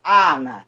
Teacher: Quando você fala Ana, esse N, tá? Ele nasaliza o A, então ele faz o A sair mais tanto pelo nariz quanto pela boca.